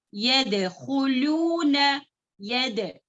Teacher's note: خلخلہ کریں گے لیکن تھوڑا ویک پڑھیں گے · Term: خلخلہ صغرا